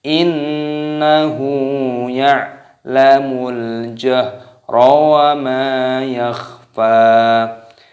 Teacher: nun tasid hukumnya dibaca gunnah, yaitu dibaca berdengung, dan hu-nya dibaca panjang. Innahu ya'lamul ain sukun, ini dimatikan ainnya.